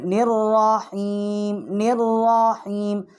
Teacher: ساکت ہو جائیں گے، اور را جو ہے یہ مشدد ہے، نون جو ہے ہم را کے ساتھ تشدید کر کے پڑھیں گے ، نررحیم نررحیم، اور یہاں را جو ہے اس کو ہم